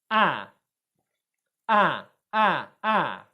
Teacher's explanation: for ah, my tongue is further forward in the mouth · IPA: /æ/